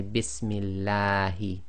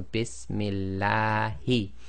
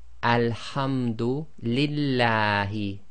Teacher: They sometimes cannot get the short alif on top of a shadda and a fatha. So always remember the lam of Allah is always 2 lengths long.